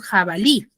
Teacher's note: Por ejemplo, yo tengo la palabra jabalí. Jabalí tiene su mayor fuerza de voz en la última sílaba, que es en la lif, porque digo jabalí, y termina en vocal. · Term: acento prosódico